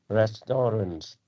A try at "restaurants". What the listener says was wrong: so there's an S restaurants